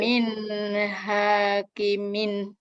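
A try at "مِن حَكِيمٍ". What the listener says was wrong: Ki-nya yang panjang. Min. Ki-nya yang panjang. Hanya pendek.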